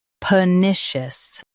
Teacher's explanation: Stress NIH and keep per light.